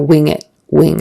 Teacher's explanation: and then the NG is a a nasal sound in and your tongue goes back in your mouth doesn't necessarily touch anything for the G